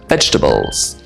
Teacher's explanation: we often drop the middle syllable in a word like this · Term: dropped syllables